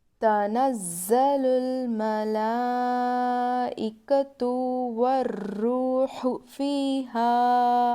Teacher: الف سے پہلے زبر تو الف مدہ ہوگا. الف مدہ کو تھوڑا کھینچ کر پڑھتے ہیں